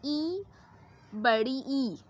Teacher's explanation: जब आप छोटी ई और बड़ी ई का उच्चारण करते हैं तो आपको तालु की सहायता की ज़रूरत होती है। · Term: तालव्य